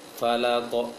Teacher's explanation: Kemudian falaq. Nah, lam yang tertebalkan. Seharusnya qaf saja yang tebal.